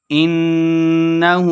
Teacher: انہو نون مشددہ غنہ کرنا ہے، ہا الٹا بے ہو 2 حرکات اس کو لمبا کریں گے۔